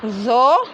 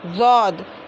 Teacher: ज़ो को जब पढ़ना है तो ज़बान की नोक को सामने की 2 दांतों के किनारों को लगाकर बोलना है, और ज़ौद को बोलना है तो ज़बान की करवट को दाढ़ों की जड़ में लगाकर बोलना है